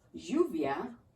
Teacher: in spanish that double l you can make it sound like a y